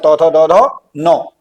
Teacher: पर हमने पढ़ा था जो त वर्ग वाले हैं ठीक है दांत और जीभ के स्पर्श से जो बोले जाते हैं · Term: दंत ध्वनि